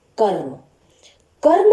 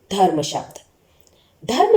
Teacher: जैसे कर्म, कर्म शब्द में र स्वर रहित है, यानी र की कम आवाज आ रही है, यानी र थोड़े समय के लिए बोला जा रहा है